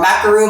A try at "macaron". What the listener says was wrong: It's macaron with 1 O.